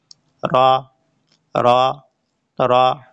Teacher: জিবার আগার উপরের পিঠ কিন্তু উল্টা পিঠ বলে নাই উপরের পিঠ জিউবার আগার উপরের পিঠ সামনের উপরের দুই দাঁতের গোড়ার সাথে লাগিয়ে একটি হরফ উচ্চারিত হবে